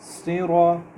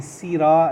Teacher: صاد ہے، تھوڑا پر کریں گے، موٹا کریں گے، اور را کو بھی موٹا کر کے پڑھیں گے